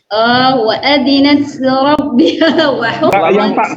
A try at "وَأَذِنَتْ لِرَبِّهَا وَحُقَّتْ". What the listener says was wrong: Yang tak sukun itu semua kok ada desisnya yang luar biasa. Hamesnya itu muncul. Yang jelas tidak ada desisnya ya? Ya hamas. Tapi hamasnya kebesaran.